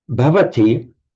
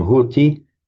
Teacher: So b softened to a h is a lenition. So bhavati by lenition can become hoti.